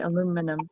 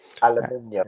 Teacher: You stress the second syllable. We stress the third syllable.